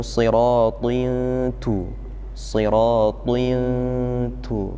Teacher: Tapi kemudian ada tanwin di situ atau ada dengungan, dengungnya harus ditipiskan karena setelahnya huruf ta.